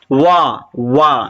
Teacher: आपके होठ भी घूम रहे हैं और दांत के पास जबान भी जा रही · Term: दंत और ओस्ट